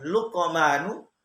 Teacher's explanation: pakai ini hukum tajwidnya adalah Qalqalah Sugra berada di tengah kata Qalqalah berarti pantul maka ketika membaca lukmanu maka harus di pantulkan